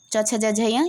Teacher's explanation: च का उच्चारण स्थान है तालु, च छ ज झ य ये तालु से होते हैं